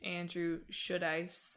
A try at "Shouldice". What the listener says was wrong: I think it's Should-Ice. I don't think you pronounce the should in there.